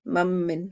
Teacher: اس ادغام کامل میں نون اور میم میں بغنہ ہوتا ہے